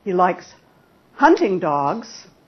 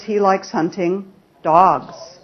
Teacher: the focus word in sentence number one is hunting but the focus word in sentence number two is dogs